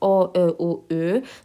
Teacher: Dodaqlar bir qədər irəli çıxır və dairəvi vəziyyət alır. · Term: Dodaqlanan saitlər